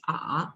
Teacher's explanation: the third tone, first you fall a little and then rise